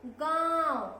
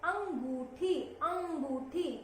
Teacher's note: नाक और गले से आवाज आ रही है